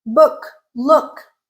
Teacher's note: Rounded but lax. Book, look.